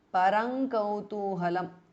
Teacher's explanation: The anuswara changes to nga, which is the anunasika or the nasal of the kavarga.